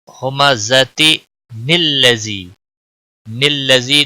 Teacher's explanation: نلذی نون کی زیر لام کے ساتھ ملے گی، نلذی، اور وقف کی صورت میں گول تا ساکن ہو جائے گی۔